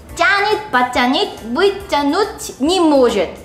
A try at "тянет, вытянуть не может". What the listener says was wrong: Это тоже нужно все сразу говорить.